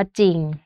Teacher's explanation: อักษรควบไม่แท้ที่ออกเสียงเฉพาะพยัญชนะต้นเพียงตัวเดียวก็คือออกเสียงเฉพาะพยัญชนะตัวแรกแต่ว่าไม่ได้ออกเสียงรเรือนะคะ